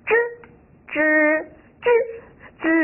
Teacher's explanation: 在读的时候呀，要比我们的声母芝音稍微长一点，更响亮一点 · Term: 整体认读音节